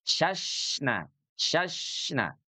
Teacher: huruf syin ketika dalam keadaan sukun dia punya sifat rakhawah mengalir suaranya